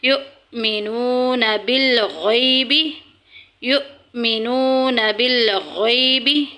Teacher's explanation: الذین یؤمنون، حمزہ ساکن ہے، ہمیشہ جھٹکے سے پڑھی جائے گی۔